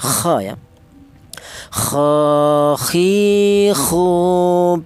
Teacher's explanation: Huruf k ini keluarnya berasal dari tenggorokan bagian atas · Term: huruf kha